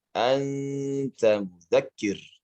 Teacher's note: koreksi pada ikhfa jangan ditebalkan. Anta bukan auta.